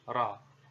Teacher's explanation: Huruf ra ini diucapkan dengan menyentuhkan punggung lidah dengan langit-langit ya, ra. Seperti itu.